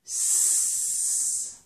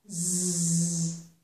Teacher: So the only difference between these two sounds is the voicing. · We're going to move from this sound s with no vocal cord vibration to this sound z with vocal cord vibration. And with these two sounds, with zzz, you can also feel some vibration in your tongue, but that's not what I'm concerned about right now, okay?